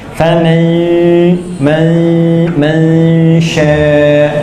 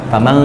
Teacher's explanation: Jadi begitu en langsung pindah ke makhrajnya sya.